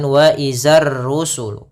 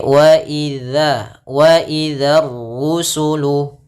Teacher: Nah, tapi sebelum itu ada huruf dzal. Hati-hati pada lafal dzal. Jangan dibaca dengan zai. Jangan wa izar rusulu.